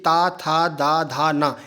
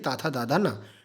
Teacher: बोलने पर जो जीवा की नोक है जो जीभ का आगे वाला जो पॉइंट है वह आपके दांतों से टकराएगा